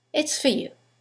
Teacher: In the sentence, the vowel is reduced to f. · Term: weak forms